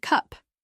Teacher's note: In cup, the vowel is more central and relaxed.